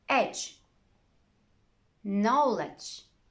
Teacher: a d can be very quiet not quite silent but very quiet in front of a g